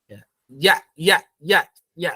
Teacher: Tengah lidah hampir menyentuh langit